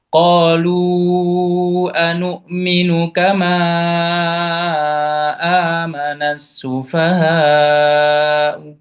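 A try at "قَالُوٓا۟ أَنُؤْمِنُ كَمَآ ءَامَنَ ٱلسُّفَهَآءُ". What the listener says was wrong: tas ya. Hamzahnya tasil bukan u gitu. seperti hamzah ya, seperti tasil itu sufaha. keras. Itu di tasil. Seperti wawu kan, ambil ambil miripnya munculnya wawu kan, sufa.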